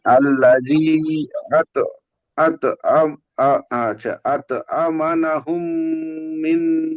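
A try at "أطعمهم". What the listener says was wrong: আমা না হয়ে যাচ্ছে, নুনটা বেড়ে যাচ্ছে ওখানে। আতআমা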